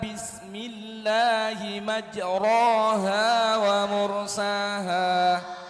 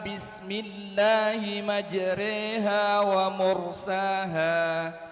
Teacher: ada bacaan imalah, majroha dibaca majreha